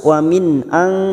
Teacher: Kita uraikan dari kata wamin karena sekarang kita wasal atau terus wamin ang nun sukun bertemu hamzah idhar halki dibaca jelas tanpa mendengung